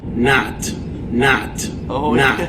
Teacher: very open fronted no lip rounding in a New York accent